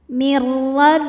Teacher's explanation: huruf ro dibunyikan secara tafkhim karena rnya berbaris fathah maka dibacanya tebal